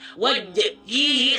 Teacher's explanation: Kalau teman-teman melakukan pantulan jimnya itu tertahan, wajhihi seolah ada hamzah sukun di sana.